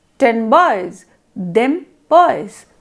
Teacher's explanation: The N sound changes to the bilabial M to make it easier to transition to the also bilabial B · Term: assimilation